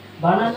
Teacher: Banana central syllable is longer. The central syllable is longer or stressed.